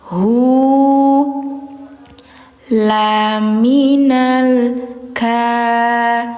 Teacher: Di huruf H, ini mad silah namanya. Mad silahnya qasiroh, panjangnya 2 harokat.